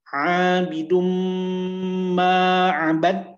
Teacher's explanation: Marhaban thumb hai hai bidum marah betul dhommatain bertemu dengan mim jadi bunyi dhommatain dimasukkan ke dalam huruf mim dan disertai dengan dengung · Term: Idgham Bighunnah